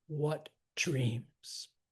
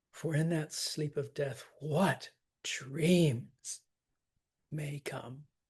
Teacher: Dreams, for sure, stressed. But again, I would hit that what too.